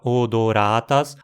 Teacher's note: a penúltima sílaba, ra, tem duas moras, então recebe o acento